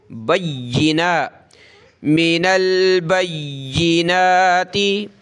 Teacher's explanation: ما أنزلنا मिनल बय्यिनाति, या को सख्त करेंगे, नून खड़ा ज़बर है, इस पर एक अलिफ की लिमिट में इसको खींचेंगे